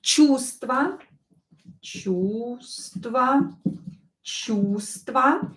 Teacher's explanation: Чувство we write with V, but we don't pronounce it. And we don't have a verification word for this V.